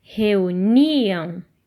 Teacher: o som mais forte da palavra reuniam está no ni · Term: sílaba tônica